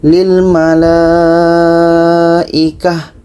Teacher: jika kita berhenti, lilmalaikah ta marbuta ini menjadi huruf ha